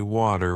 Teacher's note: In American English, people might say water with a D sound, while in British English it's often way too with a T sound.